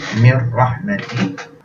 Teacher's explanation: dibaca dengan memasukkan kepada huruf ra dan tidak ada dengung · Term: idgham bilal gunnah